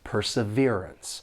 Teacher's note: this word has four syllables and the stress is on that third syllable perseverance and the second and fourth syllable have that unstressed schw